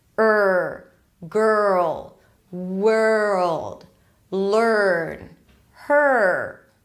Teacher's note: Basically, it's like you're taking the schwa sound, and you're bringing the back of the tongue up a bit to create that R tension.